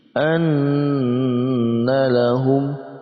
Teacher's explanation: dibaca dengan dengung dan didengungkan sepanjang 2 harakat atau 2 ketukan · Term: gunnah musyaddadah